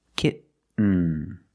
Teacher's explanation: You do the stop t. K. You don't release and then you fall to an n. Kitten. When you make the stop T, the tongue is up almost in the N position.